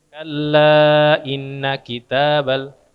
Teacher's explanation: gunna musyaddad atau gunna musyaddadah berapa harakat bacanya tiga harakat